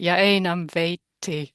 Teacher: you can give the full value to the a and the full value to the double consonant